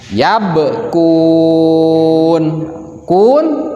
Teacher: Huruf ba ketika disukunkan harus mantul atau dikolkolahkan. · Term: huruf qalqalah